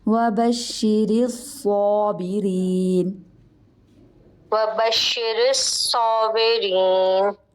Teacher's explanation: را ہے وہ باریک ہوگا کیونکہ را کے نیچے زیر ہے